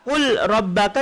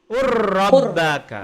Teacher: maka lam hilang, masuk ke ra.